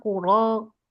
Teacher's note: untuk huruf ro nggak maju mulutnya ya. Dia alisan. Jadi nggak bibir, nggak ikut-ikutan gerak ya